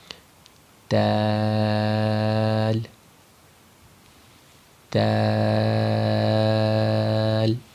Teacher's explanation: دال کا جو مخرج ہے وہ وہی مخرج ہے جو تا کا ہے، یعنی زبان کا اگلا سرا، یعنی زبان کی نوک کو ہم اوپر والے دانتوں کی جڑ سے لگاتے ہیں تو دال بھی یہیں سے ادا ہوتی ہے. یعنی زبان کی نوک کو اوپر والے دو دانت یعنی ثنایا علیا کی جڑ سے لگائیں گے.